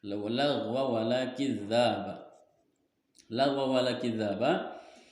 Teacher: Di sini ada hukumnya idgham bi gunnah. Lagwaw idgham bi gunnah sebab tanwin bertemu huruf waw yang bertasdid